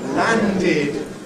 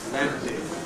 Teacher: Land ends in a D sound, therefore we add id, landed. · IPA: [ˈlændɪd]